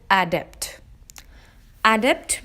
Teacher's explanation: the syllable stress is on the second syllable which is depth this makes it adapt adapt means proficient or